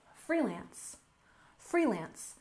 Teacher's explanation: first off we have freelance we stress the first syllable · We stress the first syllable, freelance, freelance.